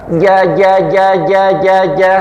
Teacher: ketika panjenengan mengucapkan ja udaranya tertahan. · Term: jim